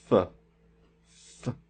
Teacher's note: good to know when we make this F sound it is it involves our lips and it involves our front teeth so because it's a lip and teeth sound we call it a labial dental so takes our lips and our teeth and it's continuous we